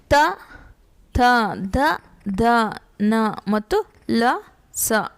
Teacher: ಹಲ್ಲುಗಳ ಬಳಿ ಹುಟ್ಟುತ್ತವೆ ಈ ಅಕ್ಷರಗಳು. ಹಲ್ಲುಗಳು ದಂತ್ಯಾಕ್ಷರಗಳು.